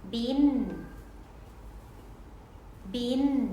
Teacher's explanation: สวัสดีค่ะยินดีต้อนรับเข้าสู่speStationสถานีพูดไม่ชัดและในวันนี้ จะพาเด็กๆไปเรียนรู้วิธีการออกเสียงแม่กลกันนะคะเสียงแม่กลเป็นเสียงที่ปลายลิ้นจะต้องยกแตะปุ่มเหงือกหลังฟันบนนะคะโดยที่เมื่อเราออกเสียงแล้วเนี่ยลิ้นจะต้องยกไปแตะที่ปุมเงือหลังฟันบนแล้วก็ จะต้องมีจมูกที่สั่นด้วยหรือว่าต้องมีเสียงขึ้นจมูกนั่นเองค่ะ